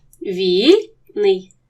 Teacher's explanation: два сонорні звуки що стоять поряд належать до різних складів